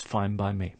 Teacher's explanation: Here we have a n sound at the end of fine, followed by a b sound in by. So the n sound starts to sound like a m.